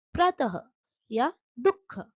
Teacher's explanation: विसर्ग के दो बिंदु होते हैं जो अक्षर के बाद लगते हैं। यह ह जैसी हल्की आवाज निकालते हैं।